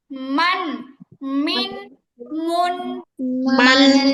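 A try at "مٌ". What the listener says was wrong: শুধু নরমালি মান মিন মিন করলে হবে না যে মানে দুই ঠোটের শুকনা পার্ট মিলাতে হবে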